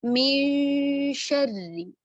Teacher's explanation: हम नून साकिना की आवाज को छुपाएंगे और आगे आने वाला हर्फ जो होगा उसके मखरज के करीब ले जाएंगे। इसी मिसाल को अगर हम देखें तो आगे शीन आ रहा है, तो हम क्या करेंगे, नून को हमने छुपाया, गुन्ना किया, पहले हर्फ पर गुन्ना करते हुए हमने गुन्ना किया नून साकिना पर, और शीन के मखरज के करीब ले गए। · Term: इक्फा